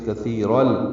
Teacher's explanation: تنوین کے بعد لام آنے کی وجہ سے کثیرل، ادغام کامل ہے، را لام سے ملا دیں گے